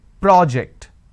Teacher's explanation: When I'm stressing on the first syllable, it becomes a noun.